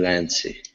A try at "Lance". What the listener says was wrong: Okay, now that last word here, remember in English, the E that's at the end of the word typically is silent, meaning that we do not pronounce it. So instead of Lancy, the word is Lance.